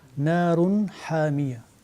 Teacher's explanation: Ensuite, nous avons un exemple de idhar, encore le dernier verset, narun hamiya. Nous avons un tanwin, damatain, suivi de la lettre ha. Donc on manifeste clairement la lettre ha